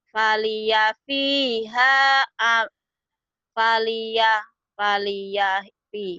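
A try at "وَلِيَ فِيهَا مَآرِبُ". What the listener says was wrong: Bukan fa, itu wawu.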